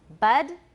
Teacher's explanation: In American, it's close to a schwa. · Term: wedge